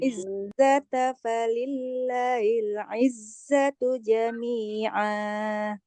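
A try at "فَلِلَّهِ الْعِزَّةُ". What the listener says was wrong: Ilahnya tadi saya dengarnya kayak nggak panjang. Falillahil. Falillahil izzatu hil. Izzatu. Ada alif lam.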